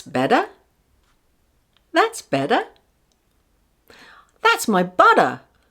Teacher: The sound is in between a D and a T sound.